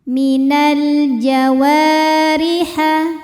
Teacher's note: Maka dibacanya panjang wau nya dua harakat. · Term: mad thabi'i dzahiri